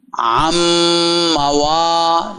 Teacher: نون میم میں مدغم ہو گیا